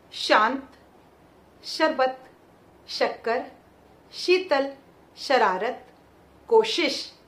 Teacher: जब हम इसका उच्चारण करते हैं, जो हमारी जीभ है, ध्यान रखिएगा इसकी पोजीशन देखिए, ये जीभ है हमारी, ये थोड़ी सी ऐसे ऊंचाई पर हो जाती है, थोड़ी ऊंची हो जाती है, दांतों के पीछे थोड़ा ऊपर तालु भाग पर टकराती है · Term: तालव्य श